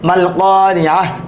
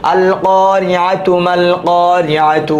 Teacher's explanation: যেহেতু আমরা থামি নাই, ওয়াকফ করি নাই, এখানে তার উচ্চারণ আসে নাই, আরে হার উচ্চারণ হয় নাই, তাহলে তার উচ্চারণ হয়েছে আল কারিআহ, থেমে গেলে হার উচ্চারণ, মাল কারিআহ থেমে গেলে হার উচ্চারণ, মিলায় পড়লে তার উচ্চারণ